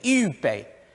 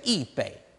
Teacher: with a few speakers, yu becomes yi in the south of China. Instead of saying yu bei, they'll say yi bei.